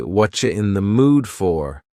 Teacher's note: Here, the word you has been reduced to cha. Cha, this is extremely common in spoken English that the word you gets changed up in a lot of ways.